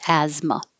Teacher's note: it looks like TH, like asthma, but we don't say the TH at all. It's just asthma.